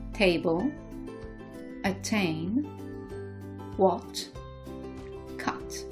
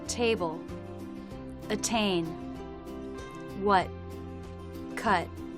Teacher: in American English, they tend to drop the T in the final position